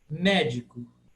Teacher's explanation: A primeira sílaba, me, é tônica. Di e co é átono.